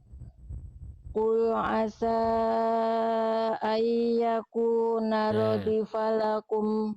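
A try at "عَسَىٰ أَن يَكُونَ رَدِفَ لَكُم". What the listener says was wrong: Kenal lagi di sini ayyakuna. Apa hukum tajwidnya? Nah, idgham apa? Nah, salahnya sama ya, Bun. Jangan sampai apa tergesa-gesa. Tahan dulu. Ayyakuna radifa dan seterusnya. Tadi Bunda masuk langsung baca. Ayya harusnya ditahan dulu 2 harokat. Lebur lalu tahan dengungkan selama 2 harokat.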